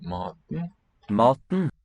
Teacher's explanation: E is silent. E kind of drops out here in that second syllable.